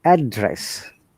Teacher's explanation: for address when it is used as noun then our tone comes from up to down we call you know rising intonation to falling intonation rising to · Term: rising to falling